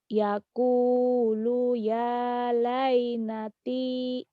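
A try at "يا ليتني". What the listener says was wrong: Lainati bukan. Laitani jauh-jauh laitani. Yang panjangnya mana? Yakulu Yakulu ya. Yakulu ya. Laitani. Tekan di mad-madnya. Yakulu ya. Yaqulu ya laitani.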